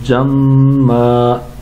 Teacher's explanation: وقف کی وجہ سے تنوین کی دو زبر جو ہیں ان میں سے ایک زبر پڑھیں گے اور وقف کریں گے, ایک زبر کو الف میں تبدیل کر دیں گے تو پڑھیں گے جمّا.